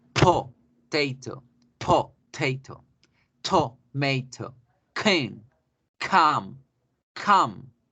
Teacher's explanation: Estas 6 primeras, todas ellas deben generar una explosión en la boca, un detenimiento del sonido.